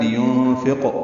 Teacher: لِيُنْفِقْ قاف ساکن پہ قلقلہ ہے